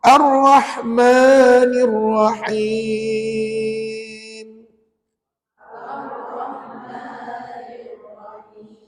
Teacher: dia bersifat dengung cuma dengung kamu tu jangan sampai dua second jangan sampai dua harakat